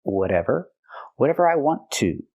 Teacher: We hear the T in whatever pronounced as a fast D because it's between vowels.